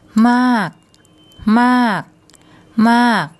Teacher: มาก มาก มาก So when says that, the energy goes into the first part of the word, then it falls away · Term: falling